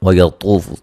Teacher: طا کو موٹا ادا کریں گے، وہ مدہ ہے